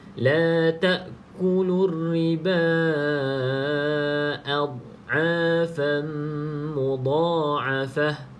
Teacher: pastikan dad ni bukan a tidak ada lantunan sebab bukan Qalqalah